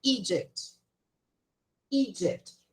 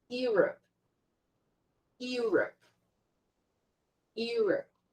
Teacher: O som da letra E no início da palavra, ela tem o som de I